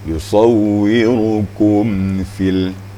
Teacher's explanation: Yang namanya izhar itu tidak dengung, hanya sekedar menjelaskan bunyi mim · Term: izhar syafawi